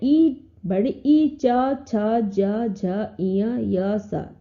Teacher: उच्चारण स्थान तालु है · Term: तालव्य